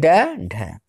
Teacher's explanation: उच्छिष्ट व्यंजन, इन व्यंजनों के उच्चारण में जीभ पीछे की ओर जाकर एक झटके के साथ आगे गिर जाती है